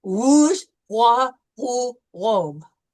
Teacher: Okay, less K sound and more like a gargle sound. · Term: uvular R